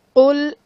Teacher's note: اعوذ باللہ من الشیطان الرجیم بسم اللہ الرحمن الرحیم۔ قل میں قاف حرف مستعلیہ پر پڑھا جائے گا